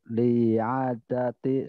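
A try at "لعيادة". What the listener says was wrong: li'iya, bukan li'a tapi li'iyadati.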